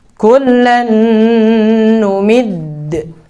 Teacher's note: Qalqalah kubra harus ditahan dulu, nggak boleh langsung mantul.